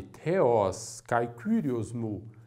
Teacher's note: Mas kai é seguido de kyrios, que também leva acento. Por isso, a tônica da frase recai em kyrios